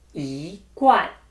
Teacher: E has changed to the second tone followed by the fourth tone, guan.